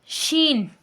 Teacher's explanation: ہماری زبان کا درمیان والا حصہ اوپر کے تالوں کی طرف اٹھتا ہے، لیکن اوپر کے تالوں کے ساتھ ٹچ نہیں ہوتا۔ اوپر کے تالوں اور ہماری زبان کے درمیان میں تھوڑا سا فرق رہتا ہے، تھوڑا سا فرق رہتا ہے۔